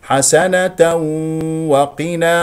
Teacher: ولدينا ادغام بغنه لان الواو من حروف ينمو مقدار غنه حركتين